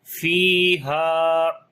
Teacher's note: فا کے بعد یا مدہ ہے، ہا کے بعد الف مدہ ہے، دونوں کو لمبا کریں گے ایک الف کے برابر